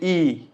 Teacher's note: अगर का मतलब होता है जीभ का जो आगे का हिस्सा काम कर रहा है, जैसे आप बोलोगे ई, तो जीभ का आगे वाला हिस्सा काम कर रहा है